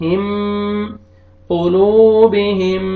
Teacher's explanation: میم ساکن کو میم متحرک میں آپ نے ملانا ہے، ادغام کریں گے غنہ کے ساتھ